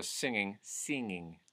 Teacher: the short I sound, I, turning into an E sound